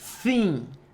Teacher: som 1 é o som do TH voiceless, onde as cordas vocais não vibram, ó. E a gente produz esse som posicionando a língua entre os dentes e tentando produzir o som de S.